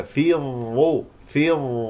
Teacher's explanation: ظاء ساكنه ثم ظاء مضمومه مفخم مرتبه ثالثه